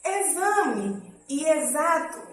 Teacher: Exame e exato já tem um som de Z.